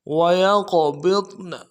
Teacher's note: سے ادا کریں گے، یا قاف کے ساتھ ملانا ہے، قاف کو موٹا ادا کریں گے، جب قاف ساکن ہو تو قلقلہ ہوگا، قلقلہ کریں گے ، با کو ضاد کے ساتھ ملائیں گے، ضاد کو موٹا